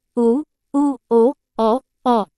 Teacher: जिन स्वरों के उच्चारण में ओष्ठ होंठ गोलाकार हो जाते हैं। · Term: वृत्तमुखी स्वर